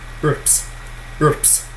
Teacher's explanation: It is an unvoiced bilabial.